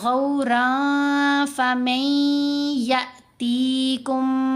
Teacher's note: را کے اوپر 2 زبر ہیں، آگے فا ہے، فا حروف فا میں سے ہے، تو را کی را 2 زبر رن میں جو نون کی آواز ہے اس کو ناک میں چھپا کر پڑھنا ہے